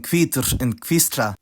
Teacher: that digraph is now pronounced [kʰv], like in hvítur and hvísla